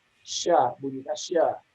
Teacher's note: Bisa kita sebut dia di tengah, yakni sya misalnya. Kita persempit dia di tengah, maka tempat keluarnya adalah di tengah lidah